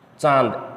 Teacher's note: अनुनासिक का मतलब है कि नाक के साथ साथ में वायु मुख से भी निकलेगी, ठीक है ना, मुख और नाक।